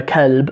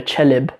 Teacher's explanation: you go out to some of the villages and you hear people call a kalb, a dog, a chelib. There's this ch sound, and my wife grew up in Saudi Arabia as well, and she uses the ch sound in her Arabic as well.